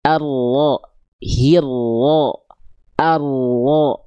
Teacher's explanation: jadi yang disentuhkan itu adalah bagian punggung lidah kita, bukan si ujung lidahnya